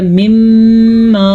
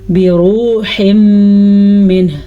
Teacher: نون ساکن کے بعد میم آیا تو ادغام بالغنہ ہو گیا مما. تنوین کے بعد میم آیا تو ادغام بالغنہ پھر ہو گیا.